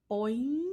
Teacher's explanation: A spring goes boing. So that's our second tone, the rising tone.